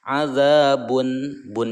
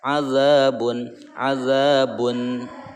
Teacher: bertemunya tanwin dengan Hamzah ini namanya Idhar dibacanya harus jelas